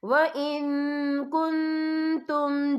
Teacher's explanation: یا دیکھیں وَإِن، یہاں نون ساکن ہے، نون ساکن کے بعد جو ہے کاف آ رہا ہے، اور کاف جو ہے اکفا کا ورڈ ہے تو ہم یہ اکفا کریں گے، نون ساکن کی آواز کو ناک میں چھپائیں گے